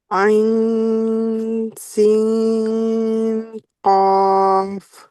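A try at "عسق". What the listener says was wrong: आप पूरा नून नून पढ़ती जा रही हैं, जबान में लगाए ऊपर।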